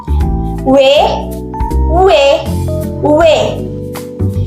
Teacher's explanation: bunyi aproksimat yang dihasilkan dengan mempersempit aliran suara tetapi udara masih bisa keluar tanpa hambatan